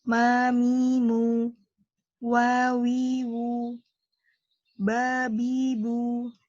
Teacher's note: huruf yang keluarnya dari kedua bibir